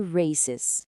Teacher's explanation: a gente cria uma sílaba a mais com o som de is